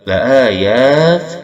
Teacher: ya ismi mad tabi'i, panjangkan 2 harakat